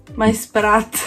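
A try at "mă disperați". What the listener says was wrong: No, ma perché dici sperat? Mai disperat.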